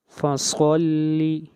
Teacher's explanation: صاد کو موٹا پڑھیں گے، صاد حروف مستعلیہ میں سے ہے